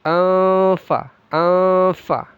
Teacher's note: Tanwin bertemu fa ikhfa disamarkan lalu didengungkan.